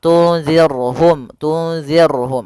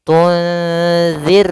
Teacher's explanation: huruf ra yang sukun didahului dengan kasrah, maka ini kita namakan dengan ra tarqiq, ra yang tipis dalam pelafalannya, jangan dibaca tunzir.